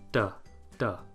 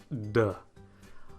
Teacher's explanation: Remember, the alveolar ridge is that bump in the roof of your mouth behind your teeth. You're going to let the pressure build up and then release it again with voicing. D, d. But once again, in French, this is typically pre-voiced. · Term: d sound